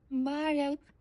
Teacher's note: It's probably in Sanskrit, and it's an L that is on the roof of your mouth. So it's almost like an R, a rolled R on the roof of your mouth, but it's just shy of like breaking into an R. It kind of stays an L.